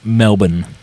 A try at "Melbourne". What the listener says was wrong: Yeah, but no, they pronounce it Melbourne. There's no R's. It's Melbourne.